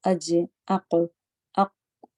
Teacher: Suddenly کٹ ہو کے بند ہوا جا رہا ہے، چلنے جیسی کوئی چیز نہیں ہے، نہ آواز نہ سانس۔ تو اق سڈنلی کٹ ہو گیا نا، تو حمزہ بھی آپ دیکھیں جب ساکن ہوتی ہے تو سڈنلی کٹ ہو جاتی ہے جھٹکے کے ساتھ، وہ اسی وجہ سے کہ اس کا مخرج ایسی جگہ پر مخرج پر کمپلیٹ ڈیپینڈ ہونے کی وجہ سے۔ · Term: شدہ